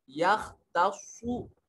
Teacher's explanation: खा को मोटा पढ़ेंगे और स्वाद को मोटा करके पढ़ेंगे